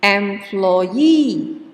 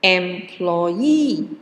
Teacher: the stress, the primary stress is in E